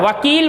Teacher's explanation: वकारस्य दंतोष्ठम, व वर्ण वकील बोलते हैं, व वर्ण का उच्चारण स्थान दंत और ओष्ठ होता है। जब हम व वर्ण का उच्चारण करते हैं तो हमारे ऊपर के दांत ओष्ठ को स्पर्श करते हैं